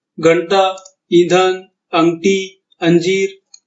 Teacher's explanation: मिसाल के तौर पर घंटा, ईंधन, अंगठी, अंजीर, इसमें अनुस्वार का जो तलफ्फुज है, जो उच्चार है, वो साफ साफ हो रहा है, यानी उच्चार या तलफ्फुज करते वक्त हमें ना की या नून की आवाज साफ साफ सुनाई दे रही है